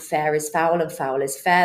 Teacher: so fricative sounds with the F sound